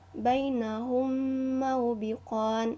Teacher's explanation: ada huruf mim sukun bertemu dengan huruf mim sehingga menghasilkan bacaan dengung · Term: idgham mimi